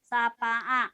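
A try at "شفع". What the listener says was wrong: Shin. Syafa'a.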